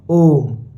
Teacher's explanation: ऐसे लंबा खींचते हैं ना। ओ को हम लंबा खींचते हैं। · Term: प्लुत स्वर